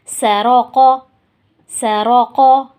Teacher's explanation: یہاں پہ را موٹا ہوگا کیونکہ را کے اوپر زبر ہے، اور قاف موٹا ہوگا کیونکہ قاف موٹے حروفوں میں سے آتا ہے، حروف مستعاریہ میں سے آتا ہے۔